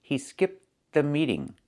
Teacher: But when you link the words, you don't really hear the t sound.